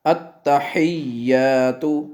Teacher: ہا کو واضح کریں اور یا سے ملائیں